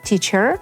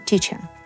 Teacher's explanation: Rhotics and Non Rhotic pronunciation as in AmE TeacheR vs BrE TEACHer